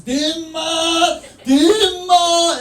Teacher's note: He was going with the Cantonese long vowels